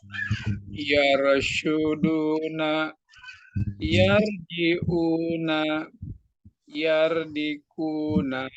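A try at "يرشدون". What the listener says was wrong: Ya, masih yar, masih yar. tipis. Tebelin. Yar.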